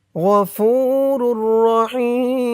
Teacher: অক্ফ করার কারণে এখানে 3 আলিফ টান হয়েছে